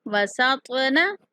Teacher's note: سین سیٹی جیسی آواز کے ساتھ پڑھیں گے